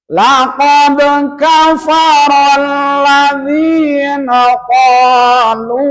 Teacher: Dal dari mana? Ujung lidah dengan gusi gigi yang atas.